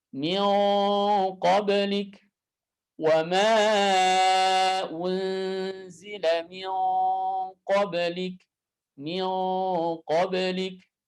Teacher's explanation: Ketika kita membaca gunnah ketemu dengan huruf qaf, maka lidah belakangnya diangkat ke atas.